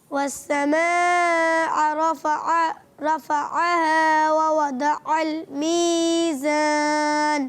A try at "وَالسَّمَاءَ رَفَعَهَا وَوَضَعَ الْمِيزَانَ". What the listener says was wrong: اچھا بورڈ پہ دیکھیے, مد کو پورا کیجئے. مد کو آپ نے دیکھنا ہے بورڈ پہ, صحیح ہے, اور مد کو تھوڑا کھینچنا ہے, کم کھینچ رہے ہیں آپ. والسماء رفعها ووضع الميزان. اچھا آپ نے بتایا بھی تھا کہ مد متصل کو کتنا کھینچ کے پڑھتے ہیں, 2.5 الف. تو اب 2.5 الف کھینچنا بھی ہے پیارے بچے.